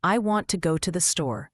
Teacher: in the sentence I want to go to the store, the words want and store are stressed.